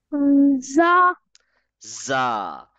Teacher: We don't touch our tongue anywhere in za, and we do read it with force. The z sound is prominent in za.